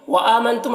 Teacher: وآمنتم، حمزہ میں کھڑا زبر ہے، اسے ایک الف کے برابر کھینچیں گے۔ نون میں اخفا ہو رہا ہے، اسے نون کی آواز کو ناک میں چھپا کر پڑھیں گے۔ تم کے میم میں اظہار اخفا شفوی ہو رہا ہے، اسے غنہ اور اخفا کے ساتھ میں پڑھیں گے، غنہ اور اخفا کے ساتھ میں اس کو پڑھیں گے۔